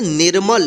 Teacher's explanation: नी के बाद आधा र का उच्चारण होगा